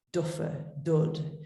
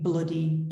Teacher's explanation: the feature of being alveolar can be used to soften the plosive effect d is milder than the bilabial b